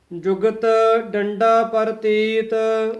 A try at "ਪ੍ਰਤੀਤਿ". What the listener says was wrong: ਹਾਂ ਪ੍ਰਤੀਤ ਰਾਰਾ ਪੂਰਾ ਬੋਲਣਾ ਹੈ ਪ੍ਰਤੀਤ ਨਹੀਂ ਕਹਿਣਾ ਪ੍ਰਤੀਤ